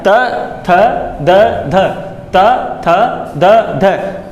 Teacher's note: जीभ जस्ट तुम्हारे अंदर की तरफ जो ऊपर वाले दांत है वहां से शुरू होगी